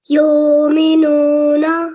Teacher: you beautifully elongated the ya and the noon for 2 seconds